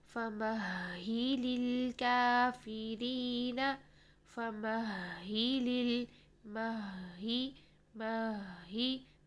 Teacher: فَمَهِّلِ الْكَافِرِينَ مَهِّ پہلے مہ اور پھر ہی. پہلے میم کو ہا ساکن کے ساتھ ملایا، سانس اور آواز کو جاری رکھا اور پھر ہی اس کی زیر کے ساتھ ادا کیا.